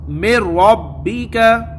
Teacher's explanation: دیکھیں، میں ربی کا نون ساکین کے بعد را ہے، ہاں ہے، تو یہاں ادغام تو ہو رہا ہے مگر گنہ نہیں کر رہے ہیں۔ نون ساکین کے بعد را ہے، ادغام ہو رہا ہے، گنہ نہیں ہو رہا ہے۔ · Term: بغیر گنہ کے ادغام